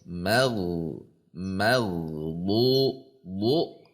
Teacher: Huruf gin memiliki sifat arrakhah sehingga saat sukun dia mengalir. Perhatikan antara dengan du itu tidak terpisah.